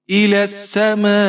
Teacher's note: الی السماء، سین کے اوپر زبر ہے، بغیر کھینچے پڑھیں گے۔ میم کے اوپر زبر ہے اور یہاں پر مد متصل ہے، تو میم کو ہم یہاں پر 5-6 حرکات تک کھینچ کر پڑھ سکتے ہیں، یعنی 3 الف تک کھینچ کر آپ پڑھ سکتے ہیں۔